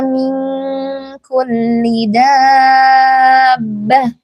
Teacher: Dabbah yang panjang itu 6 harakat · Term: mad lazim mutsaqqal kalimi